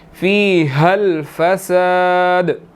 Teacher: فی حل نہیں پڑھیں گے، فی حل فساد، اور آگے دال پر قلقلہ ہوگا